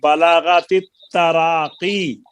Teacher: حروف مدہ کی مقدار ایک الف ہے کیونکہ اس کے بعد سبب مد نہیں آیا